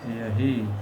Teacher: इसमें ह व्यंजन का लोप होता है। जैसे यह है जोड़ ही हो जाएगा यही।